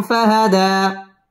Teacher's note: ফাহাদা এক আলিফ টান দিয়ে ওয়াকফ করতে হবে